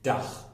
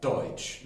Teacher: Es ist ein *alveolarer Verschlusslaut*. Das heißt, dass die Zunge am Zahndamm hinter den Zähnen liegt und es ist ein Plosiv (ein Verschlusslaut).